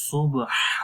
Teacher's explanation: ہا کی آواز گلے کے درمیان والے حصے سے آئے گی